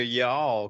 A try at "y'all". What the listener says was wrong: too much L on the end of it.